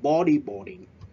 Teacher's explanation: We stress at the first syllable, những vần đầu.